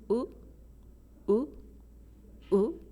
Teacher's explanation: rounded like u in European languages but it's different from you so Japanese U is just not rounded it's uh uh so it's different from o and it's also